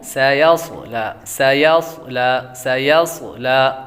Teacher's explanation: صاد کو موٹا بھی کریں گے، اور صاد حروف صفیرہ میں سے بھی ہے تو یہاں پر موٹا بھی کریں گے اور سیٹ کی آواز بھی آئے گی